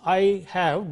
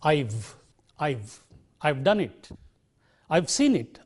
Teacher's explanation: Even if it is written with 2 words, we still collapse it into I've. We don't say I have seen it, but I've seen it. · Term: contracted form